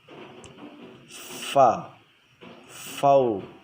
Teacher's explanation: Jadi min fa ini makhrajnya di perut bibir bawah. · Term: huruf fa